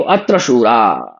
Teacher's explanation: शूराह बहुवचन है, विसर्ग का लोप हो गया है